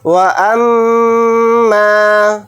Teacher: واو کو جلدی پڑھیں گے، حمزہ کو میم کے ساتھ ملا کر پڑھیں گے۔ میم کے اوپر تشدید ہے تو میم کے اندر غنہ کریں گے۔ میم کے ساتھ الف مدہ ہے، میم الف زبر ما کو تھوڑا کھینچ کر پڑھیں گے۔